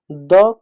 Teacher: दंत जो है द का उच्चारण स्थान है